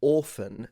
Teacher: So the T is completely gone